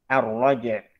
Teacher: Jadi jimnya tetap qalqalahnya terjelas.